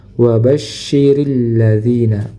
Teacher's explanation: huruf shin ini dia memiliki sifat namanya tafasyi, menyebarnya udara ke seluruh bagian mulut. Jadi suaranya dan udaranya itu tersebar ke seluruh bagian mulut.